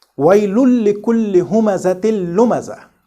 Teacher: No noon articulated at all in both the cases.